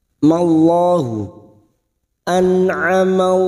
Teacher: sebelumnya ada lam jalalah yang didahului fathah. Lam jalalah kita baca tafkhim. Mallahu, an'amallahu alaihima, alai, huruf ain lagi, alaihima, fathah bertemu ya sukun, huruf lain kita lunakkan, alaihima.